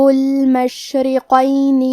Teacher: حرف الرا کے نیچے زیر ہے تو یہاں را کا حکم ہے ترقیق. ہم حرف الرا کو پتلی آواز میں پڑھیں گے. قاف کی ادائیگی زبان کے جڑ اور تالوں کے نرم حصے سے ہے.